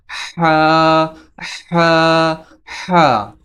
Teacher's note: হা এই হাফটি গলা কন্ঠনালী একটু চাপা দিয়ে উচ্চারণ করতে হয়